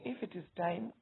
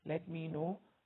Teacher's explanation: If it is time, rising tone, let me know, falling tone.